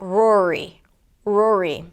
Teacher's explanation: we tend to keep the tongue up, and then the entire word sounds muffled